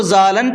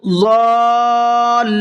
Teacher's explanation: اب دیکھیے شروع میں ضاد ہے، اس کو منہ بھر کے پڑھیں گے، اس کے بعد میں مد ہے، کھینچ کر کے پڑھیں گے، اس کے بعد میں لام کے اوپر تشدید ہے تو لام کو ڈبل پڑھیں گے اور پچھلے والے حرف سے ملا کر کے بھی پڑھیں گے۔ جب پچھلے حرف سے ملا کر کے پڑھیں گے تو ساؤنڈ یہ ہوگا اس لفظ کا ضالن، لام کے اوپر تھوڑا سا رکنا ہے۔